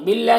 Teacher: اللہ کے لام سے پہلے با کے نیچے زیر ہے تو اللہ کے لام کو باریک پڑھیں گے اور یہ الف کو نہیں پڑھنا ہے۔